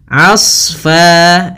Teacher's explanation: Hati-hati jangan menebalkan ainnya, tapi di sini ditebalkan adalah huruf shadnya. Hati-hati juga jangan sampai terpantulkan huruf shadnya.